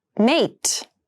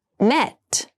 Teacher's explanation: mate has the more closed sound and met has the more open Sound